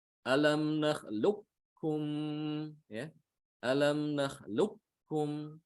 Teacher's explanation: Jadi ada sifat qafnya yang masih tersisa. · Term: idgham yang naqis